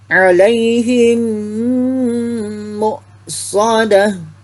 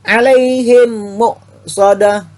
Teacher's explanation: karena huruf mim mati berhadapan dengan huruf mim maka hukumnya bacaannya adalah mendengung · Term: idgham mimi